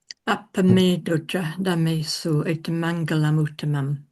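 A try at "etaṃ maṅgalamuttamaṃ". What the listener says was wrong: Etam mangalamuttamam. You've got to pronounce a double M here because we've got this word ending in an M, and the next one beginning with an M. So they've both got etam mangalam, etam mangalamuttamam.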